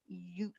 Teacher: i say you it's the fastest moving one of them all i start smiling you and i very quickly go to a round puckered position